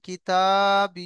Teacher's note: আর বা ইয়াজের বি, ইয়া সাকিন, তার ডান দিকে জের আসলে একে ইয়া মাদ্দা পড়ে, যেটা আজকে পড়া ছিল, আর ইয়া মাদ্দাকেও এক আলিফ পরিমাণ টান দিয়ে পড়তে হবে